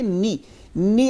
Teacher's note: اس کو نے ایسے نہیں بولنا مجہول نہیں بولنا اس کو معروف بولیں گے